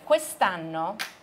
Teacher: 你念的时候这个▁o▁可以省略掉，变成▁quest'anno